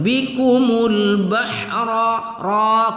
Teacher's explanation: kita tafkhimkan pada ra berbaris fathah, kita tafkhimkan, kita tebalkan membacanya